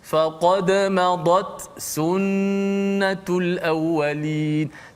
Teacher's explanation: walaupun dia ada angin, dua-dua ada angin, tapi ta dia tertahan dulu. So angin dia sikit.